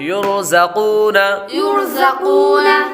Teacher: را ساکن سے پہلے حرف پر پیش ہو تو را کو پر پڑھیں گے۔ آگے قاف حروف مستعلیہ میں سے ہے، اس لیے اس کو پر پڑھیں گے